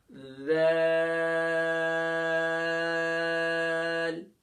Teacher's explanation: ذال جیسے بنبناہٹ ہوتی ہے نا مکھی کی، بنبناہٹ ہوتی ہے شہد کی مکھی کی، اس طریقے سے ذال.